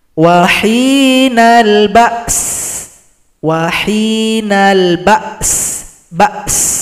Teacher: Kan nanti akan ada sifat hamas pada huruf sin, ada bunyi angin.